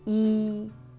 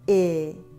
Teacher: Green T, E is a moving vowel, while silver pin I stays still.